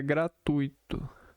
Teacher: A pronúncia correta é gratuito. Com a sílaba tônica no tu, a forma gratuito com acento na segunda sílaba está equivocado e não é aceito na norma culta da língua.